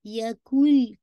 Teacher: इदगाम है कामिल, ठीक है ना, कंप्लीट इदगाम है, क्योंकि यकुन नहीं पढ़ रहे, यकुल पढ़ रहे, लाम के साथ है टोरी, है ना, साउंड कंप्लीटली मर्ज इनटू लाम, ठीक है। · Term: इदगाम कामिल